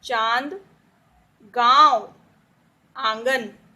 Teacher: जब हम अनुनासिक का उच्चारण करते हैं तो नाक और गले दोनों से खींचते हैं, दोनों से करते हैं तो उसे हम इतना लंबा नहीं खींचते।